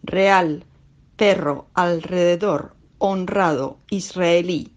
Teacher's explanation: Il est fortement roulé, notamment lorsqu'il se trouve en début de mot ou après une consonne appartenant à la syllabe précédente, le plus souvent L, N ou S, ou encore lorsqu'il est écrit 2 R.